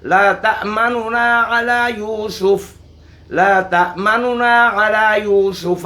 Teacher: نون کے ضمہ کا تہائی حصہ ظاہر کیا جائے۔ اس کا طریقہ یہ ہے کہ نون کے ضموں کو جلدی سے ادا کیا جائے، جس طرح کوئی چیز جلدی سے اٹھا لی جاتی ہے، اچک لی جاتی ہے۔ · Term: روم